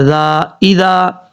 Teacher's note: اب اس کے بعد ہے اذا تراضوا، حمزہ زیر ای، ذال الف زبر ذا، اذا، ذال کے آگے الف ہے، یہ الف مدہ ہے، 1 الف کی مقدار، اس کو لمبا کر کے پڑھا جائے گا۔ اچھا کچھ لوگ پڑھتے ہیں اذا، ایسا نہیں پڑھنا، ذال میں سیٹی نہیں آئے گی، ذال بغیر سیٹی کے ساتھ پڑھا جاتا ہے۔